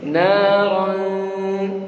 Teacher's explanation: Tapi juga perhatikan ro tebel, tapi ikhfanya tipis ya.